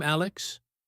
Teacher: With a rising voice, they are saying, is it okay if I talk to you right now?